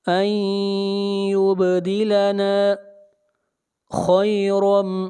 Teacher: خوا کو موٹا پڑھیں گے، خوا حروف مستعلیہ میں سے ہے